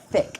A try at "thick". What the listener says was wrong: Sounds you said sick.